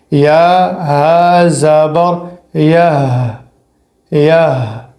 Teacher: ہا کا آواز حلق سے آنا چاہیے لیکن بالکل نرمی کے ساتھ، دباؤ نہیں ہو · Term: چشمے والی ہا